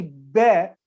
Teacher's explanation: when we say bear we close our mouth and we stop the air